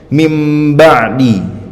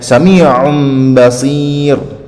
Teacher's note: Kalau nun sukun dan tanwin ataupun tanwin ketemu huruf ba bunyinya berubah jadi mim dengan dengung. Contohnya mim ba'di. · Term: iklab